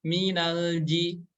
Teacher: hati-hati ketika membaca huruf lam yang berharakat sukun jangan dipantulkan karena huruf lam ini nggak memiliki sifat Qalqalah jadi jangan dipantul-pantulin